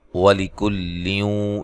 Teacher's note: یہاں لیوں پہ نون تنوین کا ادغام مع الغنہ ہے، غنہ کر کے پڑھیں گے